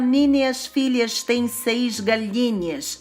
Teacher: pronunciar um s chiado era assim coisa de gente chique da Elite